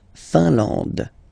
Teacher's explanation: I-N here, nasal, un. A-N, nasal, en. And then D, final E, not pronounced.